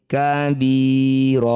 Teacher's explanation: disebut bacaan namanya mad iwad bunyi fathah tanwinnya ganti jadi fathah panjang